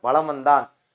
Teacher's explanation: மகர மெய்யெழுத்தை அடுத்து வகர எழுத்து வருவதால் மகர மெய்யானது தனக்குரிய அரை மாத்திரை அளவிலிருந்து குறைத்து கால் மாத்திரை அளவில் குறைக்கிறது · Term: மகர குறுக்கம்